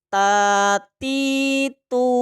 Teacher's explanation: ujung lidah dengan pangkal gigi seri atas baik kita praktekkan langsung disitu ada sifat Hames nafas berhembus